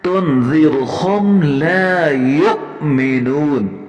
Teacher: یہاں واو پڑھ لیتے ہیں، حالانکہ واو کے اوپر حمزہ ہے، حمزے کے اوپر جزم ہے، اور قاعدہ یہ ہے کہ حمزے کے اوپر جب جزم ہو تو اسے جھٹکے سے پڑھنا ہے